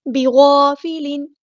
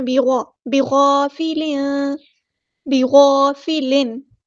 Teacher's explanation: غین ہمارا heavy letter پر ادا کریں گے، بیگا نہیں پڑھنا، بیغا، بغافلن، بغافلن یہاں پر اظہار ہوگا، تنوین کی آواز کو ہم ظاہر کریں گے کیونکہ اس کے بعد حروف حلقی میں سے عین آیا ہے.